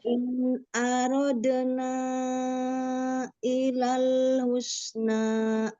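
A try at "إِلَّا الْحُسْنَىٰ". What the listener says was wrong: Illal tasdid lam. Illal husna.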